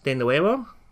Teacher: in Spanish the V sound is actually pronounced as a B sound